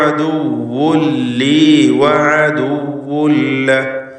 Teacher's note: അദുവ്വൻ എന്ന തൻവീനിനെ പൂർണ്ണമായും ശേഷമുള്ള ലാമിലേക്ക് ലയിപ്പിക്കുന്നു. ഇദ്ഗാം ബിഗൈരി ഗുന്ന കാമിൽ, 2 തവണ ആവർത്തിക്കുകയാണ്.